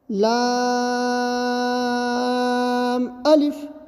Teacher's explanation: لام کو کھینچ کے پڑھتے تھے اور الف کو جلدی پڑھنا تھا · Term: مد لازم